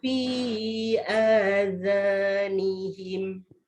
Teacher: Jadi bila zal keluar lidah tak perlu tebalkan. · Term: huruf zal